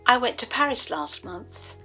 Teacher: This is called an elision, and this happens when you leave out a sound. When T comes at the end of a word and it's between two consonants, you leave out the sound. So, went, T is between N and T.